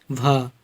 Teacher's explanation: हिंदी की स्पर्श घोष महाप्राण ओष्ठ व्यंजन ध्वनि है